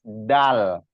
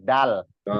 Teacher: Kalau huruf dal itu pertemuan ujung lidah dengan anak gusi bagian atas.